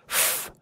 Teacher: this is a labiodental, meaning when you put your lower lip against your teeth to make the F sound